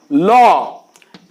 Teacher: এই বর্ণটি উচ্চারণ করার সময় শ্বাস বায়ু জীবের দুই পাশ দিয়ে নির্গত হয় বা বেরিয়ে যায় তাই একে বলা হয় পার্সিক বর্ণ তাহলে এবার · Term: পার্শ্বিক বর্ণ